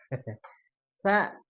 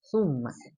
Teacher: Jadi si ujung lidahnya itu ditempelkan ke gigi seri.